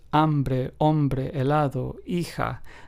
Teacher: So as we can hear in all of these, hambre, hombre, helado, hija, the H is completely silent, and the pronunciation of each word begins with the second letter